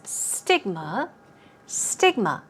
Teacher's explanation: for you is stigma stigma is quite easy as we see the stress goes on the first syllable